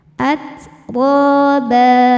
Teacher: Huruf ro dibaca secara tafkhim karena harakatnya fathah. Cara bacanya ditebalkan.